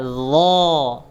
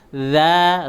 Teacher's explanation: Bedanya kalau huruf dha itu tebal, huruf za itu tipis